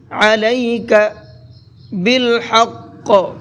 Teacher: علیک، عین کو حلق سے نکال کر کے پڑھیں گے